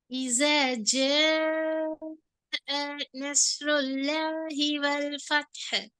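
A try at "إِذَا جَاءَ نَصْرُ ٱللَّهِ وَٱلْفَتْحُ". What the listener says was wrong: அதுல நீட்டுறது போதாவே. இந்த ஜிமை நீங்க எத்தனை செகண்ட் நீட்டும் சொல்லுங்க. நீங்க 3 செகண்ட் நீட்டீங்க அப்படியா? எப்படி விளங்குது? குறவு மாறி இருக்குதா, கூடுதல் மாறி இருக்குதா, எப்படி இருக்குது?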